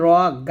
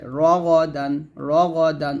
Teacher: র গা বলবেন না গাইনটা মোটা করে